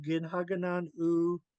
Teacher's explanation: Ginhaganan U is always said as one word, even though there's three words there. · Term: all run together